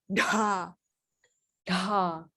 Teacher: Dr. And then you put the tongue backwards, and you make sure that it's an aspirate.